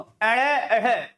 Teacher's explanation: अड़े और अढ़ ये उत्क्षिप्त वर्ण होते हैं। उनका प्रयोग जो है किसी भी शब्द के प्रारंभ में नहीं होता, अर्थात उन वर्णों को स्वर रहित नहीं किया जा सकता।